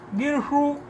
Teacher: सकार को शकार मूर्धन्य हो गया आदेश प्रत्ययों से